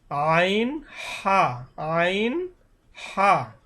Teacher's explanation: হলক মানে কণ্ঠনালী কণ্ঠনালীর শুরু হইতে উচ্চারণ হবে হামজা হা এবং মধ্যখান হইতে অর্থাৎ গলায় একটু চাপি উচ্চারণ হবে এবং এভাবে লেখা আছে হলকের মধ্যখান হইতে আইন হা আইন হা